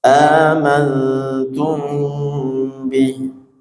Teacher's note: mam sukun bertemu ba ikhfa syafawi didengungkan juga ditahan dua harakat